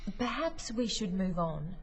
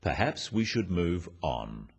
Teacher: The first one, "Perhaps we should move on," is phrased as a suggestion, but it is said in a firm way with a falling intonation at the end